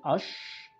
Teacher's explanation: Bunyi ash, voiceless, alveopalatal, fricative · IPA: [ ʃ ]